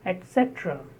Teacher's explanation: Stress on cetra, second syllable.